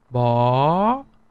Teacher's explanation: one way to uh to understand it clearly it would be the sound of a one note below here and linking all the way up to exactly the same note on the higher octave